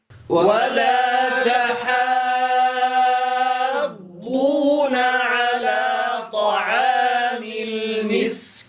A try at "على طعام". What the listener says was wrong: لا نقول على طعام طا، وإنما نجعل فقط هذه فتحة، لا نضم الشفتين عند النطق بهذه الطاء. ركز معي، لا نقول طا، وإنما نقول طا، فقط نباعد، نقرع مخرج الطاء ثم نفتح الفم، نخرج الحرف من مخرجه وتتبعه الفتحة مباشرة، فنقول طا. كرر معي هكذا، طا. لا، أنت الآن تضم الشفتين، طا.